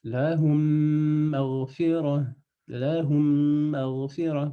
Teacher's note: On fait juste, on prolonge le mime, on va l'allonger comme ça, et on rajoute une shadda. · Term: idgham